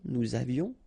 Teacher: Nous avions, final S not pronounced, and then little liaison